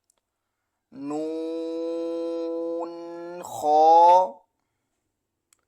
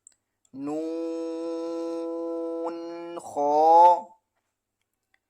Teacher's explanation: نون، خا، نون کو 5 الف کے برابر کھینچنا ہے اور خا کو 1 الف کے برابر۔ نون، خا، خا موٹے حروف میں سے ہے۔ خا کو ادا کرتے وقت زبان کی جو جڑ ہے پیچھے کی طرف سے اس کو اٹھانا ہے۔